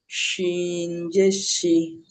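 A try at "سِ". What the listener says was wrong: সিন হবে, সিন জের সি।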